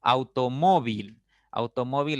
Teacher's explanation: automóvil es una palabra de cuatro sílabas así de sencillo ya la mayor intensidad está en la segunda sílaba